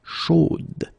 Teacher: You will have to put this final e, chaude, okay, at the end, and then the pronunciation will change a little bit, chaude. So here you pronounce the final d, whereas in the masculine form you don't pronounce it.